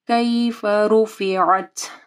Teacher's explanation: رو کو ہیوی پڑھنا ہے، رو کے اوپر پیش ہے، اور عین کو واضح پڑھنا ہے، تاکہ اوپر ہمس ہوگا۔